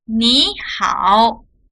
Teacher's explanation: we pronounce the first third tone as second tone, so it's 你好 instead of 你好, but it's still written as 2 third tones.